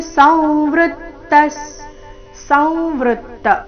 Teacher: ಅನುಸ್ವಾರದ ಉಚ್ಚಾರಣೆ ಈ ಶಬ್ದದಲ್ಲಿ ನಾಸಿಕಾವ ರೀತಿ. ಸಂವೃತ್ತ ವೃ ಮೇಲೆ ನೈಸರ್ಗಿಕ ಆಘಾತ ವಿಸರ್ಗದ ಉಚ್ಚಾರಣೆ ಅರ್ಧ ಸ ರೀತಿ.